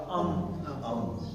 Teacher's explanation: دونوں ہونٹوں کے جڑنے کو مخرج ہے میم کا